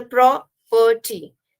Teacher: So it has two syllables again, where the pro is stressed and the perty is less stressed.